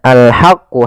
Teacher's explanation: ha kecil dibaca dengan ha alirkan nafas